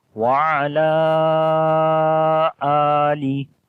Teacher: تو یہ بھی مد منفصل ہے کہ الف مدہ کے بعد جو اگلا ورڈ ہے آلی، وہاں پر حمزہ آ گیا ہے. تو یہاں پر جو مد ہے مد منفصل ہے، 3 سے 4 الف کے برابر اس کو لمبا کریں گے. پڑھیں گے وعلی آلی، آ کو لمبا کریں گے، اس کے اوپر کھڑی زبر ہے.